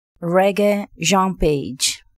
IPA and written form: ˈrɛɡeɪ ˈʒɒ̃ ˈpeɪdʒ (Regé-Jean Page)